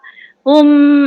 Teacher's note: Hum, mim jumpa kaf. Hum, jangan dengung maknanya kat situ izhar syafawi jelas. Jangan dengung.